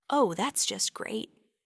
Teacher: they say it with a slow, low, perhaps slightly drawn out tone. They probably mean the complete opposite, that whatever happened is actually terrible. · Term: sarcasm